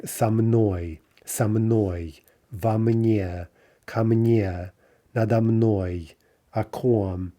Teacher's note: So prepositions only reduce to ah.